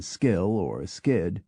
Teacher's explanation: But when the K follows an S, as in skill or skid, we withhold the puff.